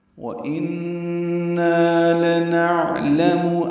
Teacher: واو ہونٹوں کی نعت تمام گلائی سے ادا کریں گے۔ ان میں نون مشدد پہ غنہ ہے، آواز ناک کے بانسے میں لے جا کر 2 حرکات تک ٹھہرائیں گے۔ نا الف مدہ ہے، 2 حرکات لمبا کریں گے۔